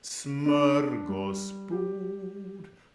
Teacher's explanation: the stress is right at the beginning of the word. Smörgåsbord. But the pitch goes up at the end